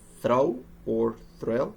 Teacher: a blend between the th and the r sound, in which the strongest sound of the two is the r sound, as in throw or thrill.